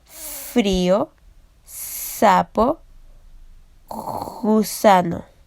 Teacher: Los órganos articulatorios se van a acercar mucho, pero no van a llegar a obstruir totalmente la salida de aire. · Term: Fricativos